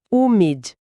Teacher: você interrompe o som de forma seca. O ar não pode ir para o nariz. Se a gente não fizer essa parada mais brusca com a língua, o som vaza para o nariz e acaba soando como uma. · Já a palavra humid termina com a letra D. Em inglês, esse D final é o que a gente chama de consoante plosiva. Você precisa, encostar a língua atrás dos dentes superiores e soltar um pequeno soprinho de ar, sabe?